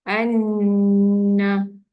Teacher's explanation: An tu dibaca sedikit panjang kerana bacaan dengung di situ